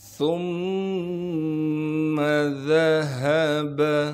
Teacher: ثُمَّ ذَهَبَ، سا کو نرم کر کے باریک کر کے پڑھنا ہے اور سا کو آگے میم سے ملائیں گے اس لیے کہ میم پر تشدید ہے، تشدید ہونے کی وجہ سے تھوڑا سا ٹھہراؤ رکھیں گے اور میم پر تشدید آ گئی ہے لہٰذا یہاں پر غنہ کریں گے